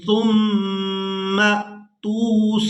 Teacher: اب یہاں میم مشدد پر غنہ کریں گے اور اس کے بعد میم کو حمزہ ساکن کے ساتھ ملائیں گے تو جھٹکے کے ساتھ ادا کریں گے۔